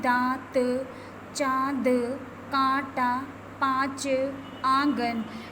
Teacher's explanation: इसका अनुनासिक का उच्चारण होता है नाक और गले दोनों से होता है